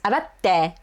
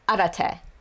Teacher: Like without the small tsu, it would just be arate. There's no pause and like plosiveness in the te part of the verb.